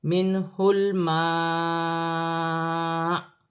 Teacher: حمزہ ساکن ہو جائے گی اور جھٹکے کے ساتھ وقف کیا جائے گا ، جیسے منہ الماء، جھٹکے کی ہلکی سی آواز آئے گی،